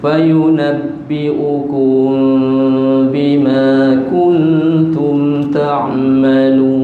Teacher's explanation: dengung situ mim mati bertemu dengan ba ikhfa syafawi, renggangkan sedikit dua bibir mulut